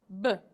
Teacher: it's a sound that we need to clip off so we don't say uh at the end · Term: clipping sound